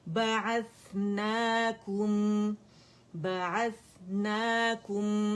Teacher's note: नून फतह, अलिफ सगीरा, ना, 2 काउंट के लिए आवाज ऊपर जाएगी, और यहाँ कुम की आवाज नहीं आनी चाहिए, काफ दम्मा मीम सुकून, कुम होगा, ठीक है।